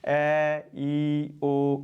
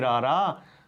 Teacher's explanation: ਉਚਾਰਨ ਵੇਲੇ ਤਾਂ ਸਾਡੇ ਉਚਾਰਨ ਅੰਗਾਂ ਨੇ ਰੋਕ ਨਹੀਂ ਪਾਈ, ਪਰ ਜਦੋਂ ਅਸੀਂ ਬੋਲਾਂਗੇ ਰਾਰਾ ਤਾਂ ਉਦੋਂ ਸਾਡੇ ਉਚਾਰਨ ਅੰਗ ਰੋਕ ਪਾਉਣਗੇ, ਤਾਂ ਇਹ ਹੈ व्यंजन ਧੁਨੀ।